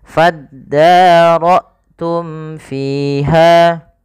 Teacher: Kemudian pada fiha, kedua-duanya kita hukumi dengan bacaan mad tabi'i, yaitu fi dan ha harus dipanjangkan sama. Wa idz qataltum nafsan faddaratum fiha.